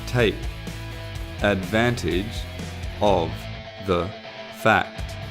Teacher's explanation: the final sound of advantage /ʤ/ links up to /əvə/ which is the reduced form of 'of' and 'the'